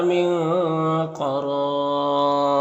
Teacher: وقف کی صورت میں مد عارض وقفی ہوگا